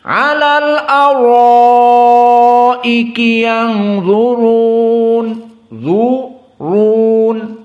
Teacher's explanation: ra-nya mufakhamah, dha-nya mufakhamah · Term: tafkhim